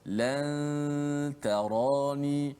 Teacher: So, kalau nun bertemu dengan huruf-huruf ikhfa, contoh nun bertemu dengan ta, bertemu dengan dal, maka nun itu didengungkan, tapi hujung lidah kita tak sentuh makhraj nun dekat langit atas tu. Kita tak sebut an.